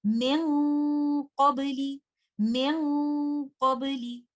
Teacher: For letter qaf, the ghunnah is heavy. We hold the ghunnah for some time. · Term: ikhfa